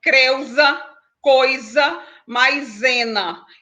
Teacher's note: o S, quando ele é utilizado entre duas vogais, ele vai ter o som de Z